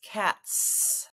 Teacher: so the idea that cat is unvoiced TTT is unvoiced so when I add the suffix s my voice stays off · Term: s sound